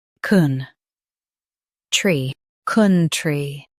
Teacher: Stress kun and keep tree light.